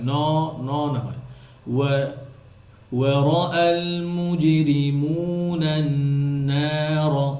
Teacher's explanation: খেয়াল করেন এখানে মুজরিমুন ন ন যেন না হয় নার না নুনের সাথে এই মাদ হওয়াতে মাদের শব্দ কি হবে পাতলা হবে যেন হেভি না হয়